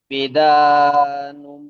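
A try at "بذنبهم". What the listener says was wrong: ভিজা টান আছে। বিদা কোথায়? বিজাম বিহিম, নুনটা বাদ যাবে তো, বিজাম বিহিম। নুন কোথাতে আসবে? নুনের পরে বা এসছে তো, তাহলে ওই নুনটা বাদ গিয়ে মিমটা পড়তে হবে তো।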